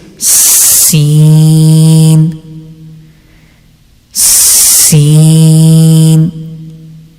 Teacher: whenever you reading Sin, you have to make sound of whistle